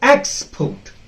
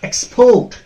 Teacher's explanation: you have to pronounce it as export first syllable stress